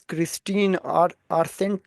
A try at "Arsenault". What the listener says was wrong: Arsenault. The LT isn't pronounced. Quebecers struggle with the L's and the T's. it's Arsenault.